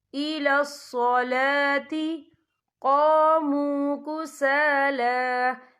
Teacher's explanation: لام کے اوپر کھڑی حرکات ہے تو ہم یہاں 2 یا 3 حرکت کے برابر کھینچ کے پڑھیں گے